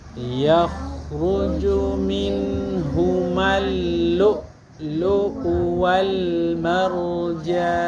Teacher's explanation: Jadi huruf hamzah itu disentakkan ya.